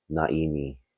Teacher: Now that glottal stop in naini is very important. It tells us that this word is an intransitive verb.